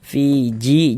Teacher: Maka huruf yang memiliki harakat kasrah ini baca panjang. Maksudnya fi dibaca panjang. Mad thobi'i panjangnya dua harakat. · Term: Mad tabi'i